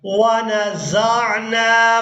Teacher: زا کو عین ساکن کے ساتھ ملائیں گے، زا عین زبر زا۔